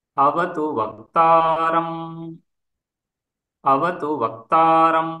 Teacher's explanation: ఆ వక్తారం రెండోసారి వచ్చినప్పుడు దీర్ఘస్వరితము.